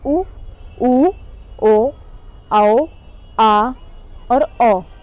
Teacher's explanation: इनको बोलने पर हमारी जीभ पीछे की तरफ हो जाती है, तो ये कहलाते हैं पश्च स्वर।